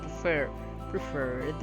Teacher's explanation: So the stress is on the second syllable.